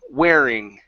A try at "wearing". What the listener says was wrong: Almost instead of wedding. Okay, your R cannot touch the top of your mouth. It's wearing.